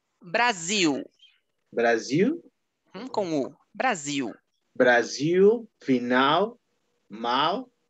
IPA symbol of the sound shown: u